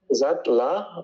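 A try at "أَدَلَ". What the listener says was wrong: No, this last one is La, but this one here is a Dal. Adala.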